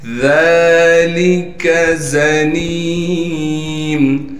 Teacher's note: زا کو تھوڑا سختی سے نکالیں گے، نون کو یا سے ملائیں گے اس لیے کہ یا ساکن ہے۔ پھر نون کو ایک الف کی مقدار کھینچیں گے اس لیے کہ نون کے بعد یا حروف مدہ میں سے یا آ گئی۔ · ذال پر کڑا زبر ہونے کی وجہ سے ذال کو ایک الف کی مقدار کھینچیں گے، لام کو باریک کر کے پڑھیں گے، کاف بھی باریک پڑھا جائے گا۔